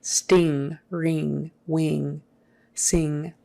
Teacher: ing is pronounced with uh kind of a nasal sound in the back of the throat that g is not normally pronounced in some regions of the